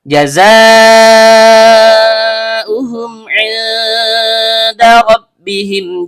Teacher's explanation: Zai, ujung lidah bertemu dengan gigi seri bawah.